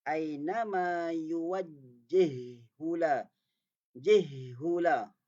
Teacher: Ha pertama dia mati, diidghamkan, dimasukkan kepada huruf ha yang kedua yang berbaris, maka bunyinya aina ma yuwajjihula.